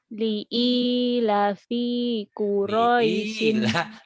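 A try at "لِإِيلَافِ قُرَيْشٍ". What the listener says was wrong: Lahnya panjang kan ada yang berdiri itu.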